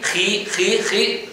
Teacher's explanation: Si hace ji, notas como la J es velar, pero se hace más adelantada.